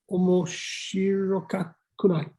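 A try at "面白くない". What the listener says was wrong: Not quite. Nearly. Omoshiro. You did. It is kunai, but you said you threw in an extra ka in there. Omoshiro kakunai. It's just omoshiro kunai.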